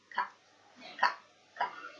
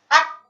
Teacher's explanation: ini sebetulnya memiliki sifat syiddah, yaitu tertahan suara.